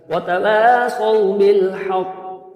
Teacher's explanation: کیونکہ شد ہے تو شدت کے ساتھ قلقلہ ہوگا، قوف موٹا بھی ہے